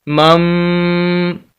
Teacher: तो इसी बिना पर हम यहाँ पर मीम को मीम के साथ मिलाएंगे और यहाँ पर गुन्ना भी होगा ना, क्योंकि मीम साकिन है और साकिन लफ्ज़ मीम साकिन अगर हो तो गुन्ना होता है, यानी नाक में आवाज़ जाएगी तो हमारा लफ्ज़ हो जाएगा मम।